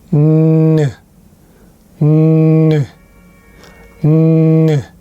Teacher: there's no air bursting or popping sound between your tongue and your front teeth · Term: nan sound